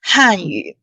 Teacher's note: Now it is fourth tone. 四声 han.